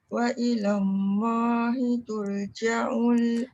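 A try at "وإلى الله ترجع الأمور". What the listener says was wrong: Tur, jangan tur. Bila tarik tur, dia jadi nipis. Wa ilallahi turja'ul umur.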